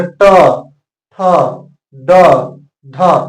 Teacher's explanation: जैसे ही आप बोलेंगे ट ठ ड ढ, आपका जीव जो है सीधा मुड़ जाएगा इस तरह से, ट ठ ड ढ, और आपका जीव मूर्धा की तरफ जाता है और इसलिए इसका उच्चारण स्थान क्या हो गया, मूर्धा।